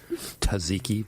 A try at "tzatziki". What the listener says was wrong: Kill the T.